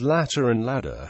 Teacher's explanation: In North American English, T and D both become the alveolar flap after a stress syllable and between vowels as syllabic consonants, making the words latter and ladder homophones, either as or.